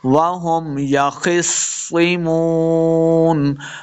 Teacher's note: وهم يخصمون، خا کو موٹا پڑھیں گے، صاد کے ساتھ ملانا ہے، آگے صاد مشدد ہے، صاد کو بھی ہم موٹا کر کے پڑھیں گے۔ یخصمون، واو حروف مدہ آ گیا تو یہاں پہ دو حرکات ہم نے لمع کرنا ہے اور آخر پہ وقف کریں گے۔